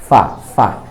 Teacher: ফায়ের উচ্চারণ নিচের ঠোঁটের পেট, সামনের উপরে দুই দাঁতের আগা